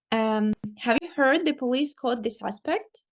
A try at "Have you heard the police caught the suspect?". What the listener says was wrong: Hold on. The question ends here. Have you heard?